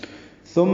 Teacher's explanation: ثا نرمی سے ادا ہوگا، زبان کی نوک سامنے کے دانتوں کے اندرونی کناروں سے لگائیں گے